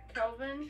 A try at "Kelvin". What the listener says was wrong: It's not Calvin, it's Kelvin. You said Calvin.